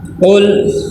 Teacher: قل لام ساکن ہے تو لام پہ قلقلہ نہ ہو اور لام کو ایسے کھینچ کے بھی نہیں پڑھنا، قل ایسے نہیں پڑھنا، بالکل آواز رک جائے۔